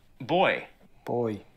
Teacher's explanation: The Aussie sound is less open.